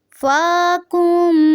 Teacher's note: فا کو تھوڑا سا لمبا کریں گے کیونکہ یہاں پہ قائم مقام مد اصلی ہے